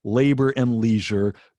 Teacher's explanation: both two-syllable words the stress is on the first syllable starts with an l sound ends with an r sound it's